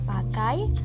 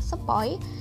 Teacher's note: vokal yang kedua diucapkan dengan posisi lidah lebih tinggi dari yang pertama posisi lidah semakin menaik sehingga strukturnya semakin tertutup bahasa Indonesia memiliki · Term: diftong naik